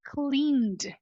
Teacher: essa transição aqui do n pro D É sim muito difícil para nós porque são dois sons de consoantes juntos né o encontro consonantal coisa que não não acontece no português